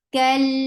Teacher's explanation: kaf is light, attached with lam. But the fatha on lam is very short.